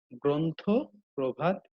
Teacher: রফলা যুক্ত আদ্য অ এর উচ্চারণ ও এর মতো হয়